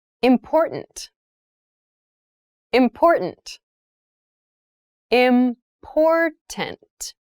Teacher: that first t is actually reduced it sounds more like a d in fast speech